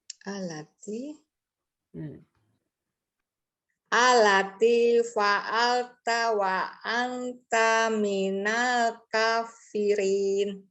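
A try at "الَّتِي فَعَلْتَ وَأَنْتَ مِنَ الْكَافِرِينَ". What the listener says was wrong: Alati, lamnya bertasydid. Wa anta, dengungnya kurang.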